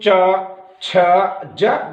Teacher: च छ ज, जिह्वा तालु को स्पर्श कर रही है। च छ ज झ, इसलिए स्पर्श व्यंजन भी हैं।